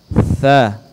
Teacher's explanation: ujung lidah kita disentuhkan di ujung gigi depan bagian atas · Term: huruf tsa